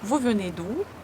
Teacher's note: When you pronounce ou, push your tongue back.